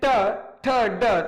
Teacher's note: मूर्धन्य हम आपको बता दें इसलिए कहा जाता है कि जो हमारी जिह्वा है, जब बोलते हैं ट ठ ड, तो आप प्रैक्टिकल करके देखेंगे कि हमारे जो जिह्वा का जो सिरा है वो पीछे की ओर मुड़ जाता है, तालु के सिरे की ओर